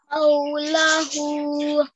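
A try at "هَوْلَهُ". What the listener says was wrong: Just the vowel lean here, we have to prolong it for a tiny bit longer. Hawlahu.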